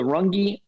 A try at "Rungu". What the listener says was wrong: Rungu. Got a U, Rungu.